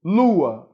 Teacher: Lu é mais forte, né? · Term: sílaba tônica